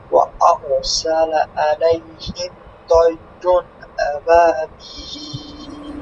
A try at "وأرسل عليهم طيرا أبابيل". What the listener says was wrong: আলাইহিম না, আটা একটু আপনার যে কণ্ঠনালী থেকে একটু চাপ দিয়ে দিবেন মধ্যখান থেকে। আলাইহিম, বলেন, আইন, উ। আইন জবর আইন জের আই।